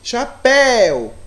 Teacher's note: o papel ele sobe a intensidade dele é mais alta então eu classifico essa palavra como oxítona porque a sílaba mais forte é a última